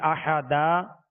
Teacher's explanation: اگر یہاں وقف کریں گے جیسے احدا تو پھر الف پڑھیں گے، یعنی 1 زبر 2 زبر کی تنوین کو الف سے بدل کر 1 حرکت پڑھتے ہوئے احدا. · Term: وقف کا طریقہ